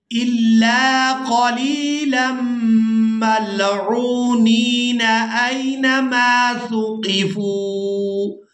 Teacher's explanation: اگر ہم یہاں پر وصل کے ساتھ ادائیگی کرتے ہیں پھر ہم لام کو میم مشدد کے ساتھ ملائیں گے